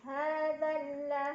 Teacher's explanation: Hamzah wasalnya yang sebelum lam, yang alif itu. Nah, maka apabila tidak berhenti, zalnya pendek aja, langsung tekan ke lam yang tasydid.